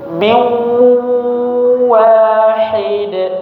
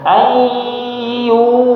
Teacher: Kalau huruf waw berarti posisi mulutnya sudah bulat, sudah monyong, miu misalkan, miu, gitu, sudah bulat. Kemudian masih ada sifat gunnah atau dengungnya, sehingga suara itu ada yang keluar dari mulut, ada juga yang keluar dari hidung, rongga hidung.